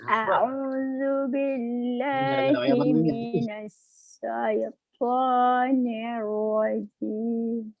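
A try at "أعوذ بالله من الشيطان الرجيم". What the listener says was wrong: Nah, itu berarti masih salah di sin ya. Bukan minas. Nah, gitu, minas. Nah, tebal, coba. Tapi diulang, dipelajari itu minas ya, shin. Nah, shin ini dipelajari sha, shi, shu. Sha, shi, shu.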